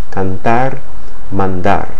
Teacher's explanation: the T and the D that come after the N draw the tongue down against the teeth, okay? Down from that ridge behind the teeth to the teeth.